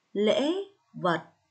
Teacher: vần ất ở tiếng vật có âm cuối tờ và lên giọng ở tiếng lễ